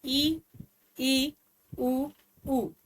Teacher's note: ये चार ऐसे हैं जिसके अंतर्गत जो है वो आपका मुंह सबसे कम खुलता है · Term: समृत